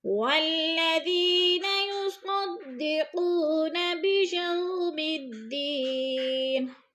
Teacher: للسائل والمحروم، والذین یصدقون بیوم الدین، بیجو پہ بولین ہے، چھٹکا بھی نہیں دینا اور کھینچنا بھی نہیں ہے۔ دین پہ یا مدہ ہے، یا ساکن سے پہلے دال کے نیچے زیر ہے، یا مدہ 2 حرکات کے برابر ہم نے اس کو کھینچ کر پڑھنا ہے۔